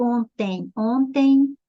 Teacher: eu tenho vogal semivogal ditongo decrescente e o som é nasal